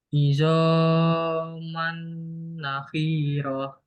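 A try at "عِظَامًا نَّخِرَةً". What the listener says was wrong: nakhirah. Ini dua harokat nggak terlalu panjang ya. Idhoman nakhirah.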